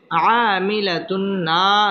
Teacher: বাম পাশে খালি আলিফ মদের হরফ একালিফ টেনে পড়তে হবে আমিলাতুন তানবিনের বামে নুন আসছে এটা হচ্ছে ইদগামে বা গুন্না গুন্নার সহিত মিলিয়ে পড়তে হবে